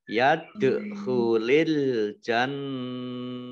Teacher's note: Yadkhulal jannata, alif lamnya alif lam komariah ditandai dengan lamnya dibaca sukun. Kemudian nun tasdid dibaca gunnah atau mendengung ditahan 2 harokat. Yadkhulil jannata, illa lamnya dibaca double, ada tasdidnya.